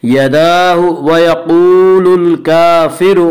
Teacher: क़ाफ़ को पुर पढ़ेंगे। क़ाफ़ हुरूफ़ मुस्तालिया में से है। हुरूफ़ मुस्तालिया 7 हैं जिनका मजमुआ ख़ुस्सा ज़ग़्त नक़िज़ है, जो हमेशा हर हाल में पुर पढ़े जाते हैं।